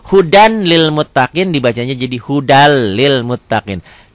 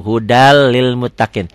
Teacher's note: jadi yang 6 itu dibagi dua lam dan ro idgham bilagunnah idgham bilagun idgham yang tidak memakai dengung ke hidung